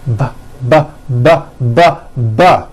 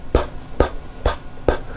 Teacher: The only difference is my vocal cords are either vibrating or they're not vibrating. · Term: paired consonants